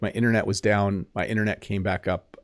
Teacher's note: you do kind of uh switch the T to a d a bit